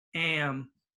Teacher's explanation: it's in front of an M so it's gonna be nasal in the nose